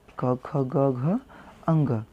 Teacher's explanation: क ख ग घ अंग, इनका उच्चारण स्थान क्या होता है? कंठ से होता है।